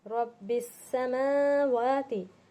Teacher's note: रब्बिस समावाति, देखिए अब रब्बिस समावाति, मीम पर खड़ा ज़बर है, वाव पर भी खड़ा ज़बर है, इसलिए हम दोनों को भी खींचेंगे। रब थोड़ा सा मोटा पड़ रहा है